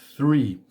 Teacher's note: eu coloco a língua no meio dos dentes e apenas assopro · o TH ele é pronunciado com língua no meio dos dentes e, neste caso, é um som unvoiced, que seria um som apenas de sopro, sem utilizar a corda vocal.